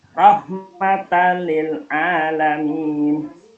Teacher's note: Alasannya ada fathah tanwin ketemu dengan huruf lam. Cara membacanya masuk tanpa dengung. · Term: idgham bila gunnah